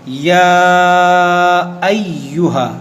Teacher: اب یہاں پر دیکھیں، یہ چھوٹی مد ہے، اس کو عام زبان میں آپ چھوٹی مد کہہ دیں، لیکن تجوید کی زبان میں اسے مد منفصل کہتے ہیں، مد منفصل، لیکن یہاں پر آپ چھوٹی مد کہہ سکتے ہیں۔ یہاں پر آپ کو کھینچنا ہے 2 ڈھائی 3 الف کے برابر